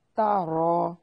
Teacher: حروف قلقلہ کو حالت سکون میں ہلاتے ہیں، حروف قلقلہ کے سوا کسی بھی حرف کو حالت جزم میں نہیں ہلاتے۔ تا رو، تا کو باریک پڑھنا ہے اور را کو موٹا ادا کرنا ہے۔ را کے اوپر فتحہ ہے اس لیے اسے موٹا ادا کریں گے۔